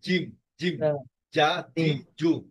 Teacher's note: জিমের উচ্চারণ ক্ষেত্রে জিহ্বাটা আপনার সামনের হাফ অংশটা তালুতে লেগে যাবে